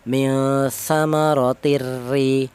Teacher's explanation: Idgham itu memasukkan huruf awal ke huruf yang nomor 2 sehingga menjadi satu huruf yang bertasdid, atau nama lain idgham itu adalah melebur, di mana nun huruf nun yang mati dilebur ke huruf ro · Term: idgham bila gunnah